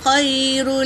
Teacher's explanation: یا ساکن سے پہلے زبر یائلین، اسے جل پڑیں گے، نرم آواز میں پڑھیں گے۔ را تنوین ہے اور لام پر تشدید ہے تو تشدید والے حرف کو 2 بار پڑھیں گے۔